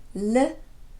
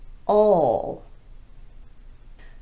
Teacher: What we know about the dark L is that there's a slight vowel sound in front of it. It's not L like the L at the beginning of words, but rather all.